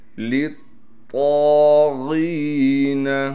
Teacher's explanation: طا پر تشدید ہونے کی وجہ سے تھوڑا ٹھہراؤ بھی کریں گے، اور طا پر زبر ہونے کی وجہ سے اور طا کے بعد الف ہے اس لیے طا کو ایک الف کی مقدار کھینچیں گے بھی۔